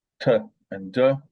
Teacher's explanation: T and du are both alveolar